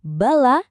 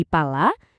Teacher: Perbedaan antara bunyi beh dan p itu ya cuma getaran itu aja.